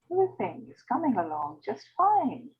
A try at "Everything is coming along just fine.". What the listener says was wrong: Good, yeah. So now it is good.